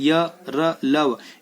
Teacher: जिन व्यंजनों के उच्चारण में जीभ मुंह के किसी भाग को पूरी तरह स्पर्श नहीं करती उन्हें अंतःस्थ व्यंजन कहते हैं